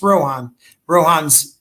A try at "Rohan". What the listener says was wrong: I think the H is silent. It's probably Rowan.